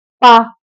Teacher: हमारे दोनों होंठ मिल गए, मतलब ये ओष्ठ है